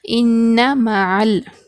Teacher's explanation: عین سے لام کو ملا کر پڑھیں گے، یہاں پر الف کو نہیں پڑھا جائے گا کیونکہ عین جو ہے حروف خمری میں سے ہے۔